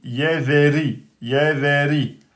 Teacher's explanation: Le ra porte une kasra, donc aminci.